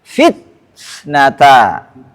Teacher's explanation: Enggak boleh langsung ke fitnata. Ada syiddah dulu sebentar kemudian ke hams.